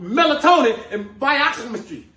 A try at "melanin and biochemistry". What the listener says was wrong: first of all, it's not melatonin and whatever it is that you just said. It's melanin and biochemistry. You can't even pronounce the word,